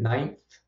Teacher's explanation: I can put my tongue right in between the teeth at the point that I make the nasal consonant sound, which is very brief, and then go right into the dental or interdental fricative, voiceless fricative sound. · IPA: [nãɪn̪θ]